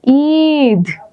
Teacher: বলার সময় আমি একটু দেরি করে বলি যেমন ঈদ তাই না ইলিশ বলার চাইতে ঈদ বলতে বেশি সময় লাগে ঈদ তার মানে এটা দীর্ঘ স্বর